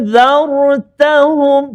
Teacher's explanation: Dengung dia 2 harakat. Jangan panjang sangat. 2 harakat. Dengung. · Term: ikhfa haqiqi